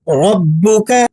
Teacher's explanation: अलम तर कैफ फला रब का र को पुर अदा करेंगे। बा मुशद्द है। इसे सख्ती के साथ पढ़ा जाता है।